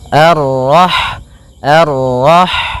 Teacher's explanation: Ha yang berharakat sukun. Dan sifat ha itu yang paling mencolok adalah sifat hamnya yaitu mengalirnya nafas ketika kita membacanya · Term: sifat hamsnya